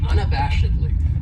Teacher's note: this adverb has five syllables and the stress is on that third syllable